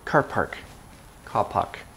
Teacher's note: They often kind of drop R's in British.